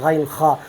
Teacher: ادنائے حلق سے 2 حروف ادا ہوتے ہیں غین خا